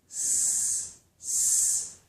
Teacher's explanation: These two sounds are made with the tongue tip and the upper gum ridge. So the tip of my tongue is up close to the ridge behind my upper teeth, but it doesn't touch. So if I make this sound, for example, S, S, the tongue is close to the ridge, but I'm pushing the sound, I'm pushing the air out over my tongue.